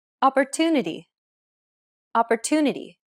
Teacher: are often shortened while stress syllables are pronounced longer opportunity opportunity the stress syllable to in Opportunity is pronounced longer than all the other syllables